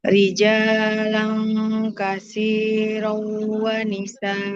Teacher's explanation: setiap ada tanwin bertemu dengan wau, maka dia melebur ke huruf wunya